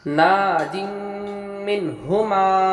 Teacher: نا میں الف مدہ ہوا، ایک الف کے برابر کھینچ کر پڑھیں گے. یہاں پر دو زیر کی تنوین میم آیا تو یہاں پر ادغام بالغنہ ہوا، غنہ کے ساتھ پڑھیں گے.